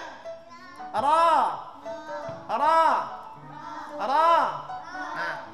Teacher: Hujung lidah menyentuh langit-langit.